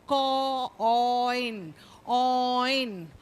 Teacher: the first vowel Glides goes to the second vowel and you will hear the sound of both the vowels it's like a slow Glide they go and they join together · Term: gliding vowels